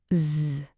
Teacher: C'est le son z. Là encore, on a cette petite vibration un peu comme le bruit d'un insecte